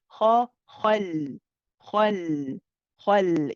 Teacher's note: The ha is heavy, the lam is light, the qaf is heavy.